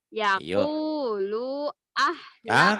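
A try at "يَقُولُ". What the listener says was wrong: Kenapa lu-nya panjang? Yaqulu. Emang lu-nya panjang? Ayo. Lu-nya pendek lagi. Tadi lu-nya panjang.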